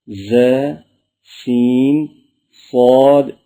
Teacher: ان 3 حروف ز، سین، صاد کو ادا کرتے وقت سیٹی کی طرح تیز آواز نکلتی ہے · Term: حروف صفیریہ